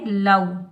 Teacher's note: واو لین کو ہم نرمی کے ساتھ ادا کریں گے، بغیر کھینچے پڑھیں گے